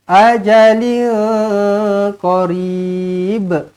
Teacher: tanwin tak selari bertemu dengan qaf, ikhfa hakiki, dengungkan 2 harakat